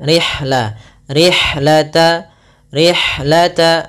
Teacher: alirkan nafas pada lafal ha, karena ha memiliki salah satu sifat, yaitu sifat hams.